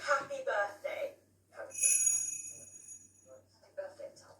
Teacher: so yeah you would say again it's a mixture so you you keep the h like rp does but you drop the th like cockney